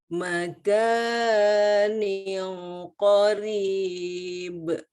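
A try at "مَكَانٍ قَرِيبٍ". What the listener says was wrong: Ini kurang tepat nih. Panjang kafnya tadi, ini harusnya cuma 2 harokat. Bisa-bisanya lebih panjang daripada waktu tanwin ketemu kaf, harusnya yang 3 harokat.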